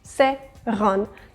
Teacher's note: Similarly, in the word seran, which actually means table, we're equally saying E and A. Seran. None of the vowels is omitted.